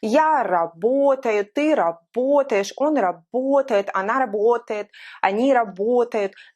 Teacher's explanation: Both of these verbs have the same stress throughout the whole conjugation.